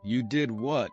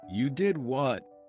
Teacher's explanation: Imagine saying, You did what? with a rise in your voice.